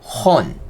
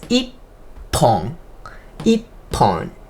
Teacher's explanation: So at those double consonant, H sound becomes P sound.